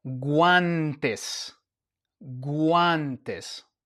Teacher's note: We have the g, the u, and the a. And this is a gua sound. We pronounce the U and we pronounce the A.